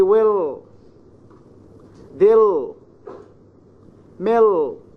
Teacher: coming finally or before a consonant, then it is considered as dark L